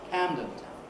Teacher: putting the stress on the first element